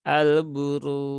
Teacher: huruf ro itu dibaca tebal yaitu dengan mengangkat pangkal lidah ya, dengan mengangkat pangkal lidah bukan dengan memonyongkan bibir. Kemudian di sini ada waw sukun setelah dhammah bertemu dengan huruf jim, maka dia ketika wakaf ya menjadi mad arid li sukun.